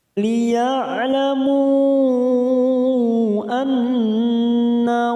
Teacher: ada mad yang bertemu dengan hamzah di lain kalimat, mad jaiz munfasil, 4 harokat kita panjangkan